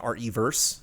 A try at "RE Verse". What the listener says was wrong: It's not reverse, it's RE verse.